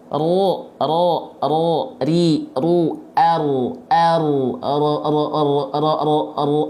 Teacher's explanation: ro itu memang dia bergetar lidahnya er er gitu tapi dia enggak boleh terlampau berlebihan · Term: takrir